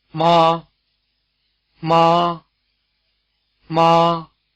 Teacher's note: its pitch is near the top of the speaker's range and its Contour is level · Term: high tone